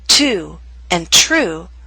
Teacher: in the words to and true we have the puff of air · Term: true T